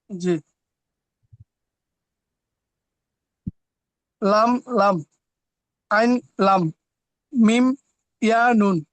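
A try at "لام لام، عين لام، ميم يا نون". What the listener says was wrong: জি, মাশাআল্লাহ, সুন্দর হয়েছে।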